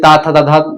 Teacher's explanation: त थ द ध न आप दंत से बोलते हैं